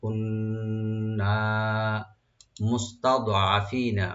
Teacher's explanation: আর প্রথম তা এখানে ওপেন হবে, দোয়াটাকে একটু ডিপ করে পড়তে হবে। মুস্তাদ কলকলা যেন না হয়।